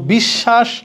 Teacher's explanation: কারণ কি? শব্দের মাঝখানে বফলা আছে, যার সাথে আছে ওই বর্ণটা দ্বিত্ব উচ্চারিত হবে।